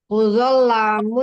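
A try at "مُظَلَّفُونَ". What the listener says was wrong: Muzallafun. nggak ada mim. Muzallafun. muzallafun.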